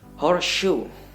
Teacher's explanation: And so we can speak like we can pronounce it like horseshoe. Just merge the s and sh, but dominant with sh of sound from the shoe. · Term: full assimilation